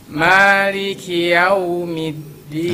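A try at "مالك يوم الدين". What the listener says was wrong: Hati-hati jangan masuk hidung ya, jangan yaumiddin.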